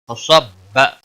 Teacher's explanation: صاد حروف مستعلیہ میں سے ہے، پور پڑھا جائے گا